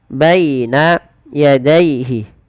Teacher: Lafal baina dan daihi ini kedua-duanya dibaca dengan bacaan lin. Yaitu dengan melembutkan bunyi suara ya-nya dilembutkan.